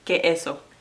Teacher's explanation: But when they want to say es, like es, meaning is, they usually say e. You're gonna hear like que eso.